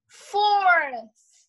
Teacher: o TH, ele é só um sopro, ele não tem um som, né? Mas em outras palavras, ele vai ter um som, um sopro com som, né?